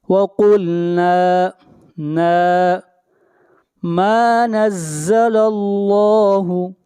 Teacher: یہاں پر لفظ اللہ کو موٹا پڑھا جائے گا، لفظ اللہ سے پہلے زبر ہے، جہاں بھی لفظ اللہ سے پہلے پیش یا زبر ہوگی وہاں پر لفظ اللہ کو موٹا پڑھا جائے گا، اور جہاں پر زیر ہوگی وہاں پر لفظ اللہ کو باریک پڑھا جائے گا۔